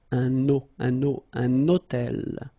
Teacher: So you can see that I'm making this little liaison, this little link between the two.